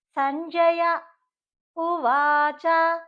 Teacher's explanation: ఉ తో స్టార్ట్ అయింది ఉ అనేది అచ్చు కాబట్టి చిన్న పాస్ తీసుకోవాలండి